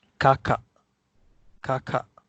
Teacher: if the closed syllable end with K or G, we actually don't pronounce the G and K. We pronounce it as glottal stop.